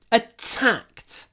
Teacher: И если я вот хочу еще ударение ставить на это слово, вот, attacked, я делаю еще больше придыхания.